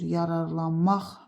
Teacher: Vurğu 4-cü hecaya düşür. Yararlanmaq axıra düşür.